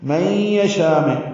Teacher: من یشاء میں ادغام ناقص ہے، غنہ کریں گے. یشاء میں مد متصل ہے، اب اس کو لمبا کریں گے.